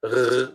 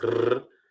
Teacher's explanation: you have sometimes a r with the tongue and sometimes a r in the back